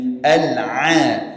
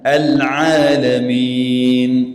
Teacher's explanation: Pastikan ain jelas. Itu makhrajnya dari tengah tenggorokan.